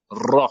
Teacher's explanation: Ra. Alors que le ra, c'est avec la langue. On fait vibrer la langue. Ra. D'accord?